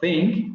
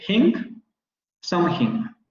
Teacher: el uso del fonema glotal fricativo sordo en lugar del fonema dental fricativo sordo. Es decir, ellos en lugar de pronunciar think y decir something, van a decir hink, something.